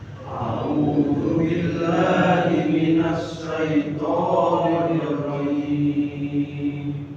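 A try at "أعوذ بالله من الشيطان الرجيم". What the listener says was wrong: Ya, ini menggunakan syin Pak ya. Jadi syin ya. Jadi dia bukan sa tapi syin. Oke, syin besar. Jadi a'udzu billahi minasy. Nah, dia masuk ke minasy. Seperti kita kalau musik ayat itu kan a'udzu billahi minasy syaithanir rajim. Jadi syin ya.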